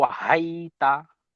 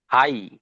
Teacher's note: হামজা, হা ইয়া জবর হাই, ইয়া সাকিনের ডান দিকে যাবার এসেছে, একে ইয়া লিন বলে, এটি কি নরম আওয়াজে তাড়াতাড়ি পড়তে হয়, টান দেওয়া নিষেধ।